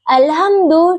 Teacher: Huruf mim makhrajnya itu di bibir yang tertutup rapat